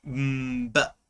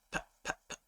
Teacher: If you try and create the sound for the letter B without using your voice, it just becomes p, p. Yeah.